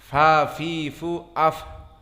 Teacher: Maka fa di saat disukunkan dia keluar nafas. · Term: hams